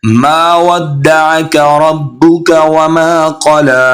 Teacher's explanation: रब्बुक रा मोटा पड़ा जाएगा, क़ला क़ाफ भी मोटा पड़ा जाएगा।